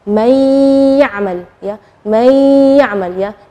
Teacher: Nunnya tidak jelas tapi ada suara dengung gunnahnya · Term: idgham